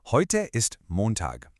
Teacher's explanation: The melody just falls. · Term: falling tone